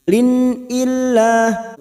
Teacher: Idhar halq dibaca jelas tanpa mendengung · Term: idhar halqi